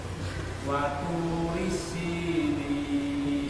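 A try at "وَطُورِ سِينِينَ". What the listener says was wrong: Jangan waturis. Turi. Rinya pendek. Waturisinin.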